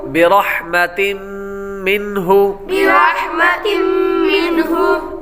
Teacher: آگے تم منہ پر تنوین کے بعد میم حروف یرملون میں سے آ رہا ہے اس لیے غنہ کر کے پڑھیں گے۔ آگے میم کے بعد نون من، نون ساکن ہے، نون ساکن کے بعد ہا حروف حلقی میں سے آ رہا ہے اس لیے غنہ نہیں کریں گے۔